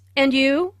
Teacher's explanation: Notice the rising intonation on and you. This shows that is interested in what Jane has to say.